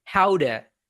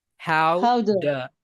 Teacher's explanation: in American English though that t gets pronounced as a d sound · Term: flap t